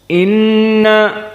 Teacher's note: Nun musyaddadah wujubul gunah diwajibkan gunah dua harakat Inna dan makhrajnya dari kisum maknanya dari hidung bukan dari bibir